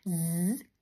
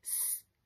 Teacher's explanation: zöngétlen mással hangzóval használd a torkodat z rezeg sz nem rezeg ennyi a z zöngés az ez pedig zöngétlen